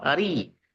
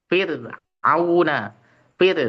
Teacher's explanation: ra kasrah ri itu dibaca tipis terus